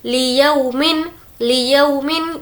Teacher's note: यौ यहाँ पर नहीं खींचेंगे क्योंकि वावलीन है।